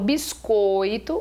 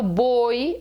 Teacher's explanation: quando falo biscoito o ditongo é fechado